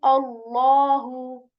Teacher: I'm making this Allah's name sound heavy, right? Specifically the lam of Allah's letter. I'm saying Allahu.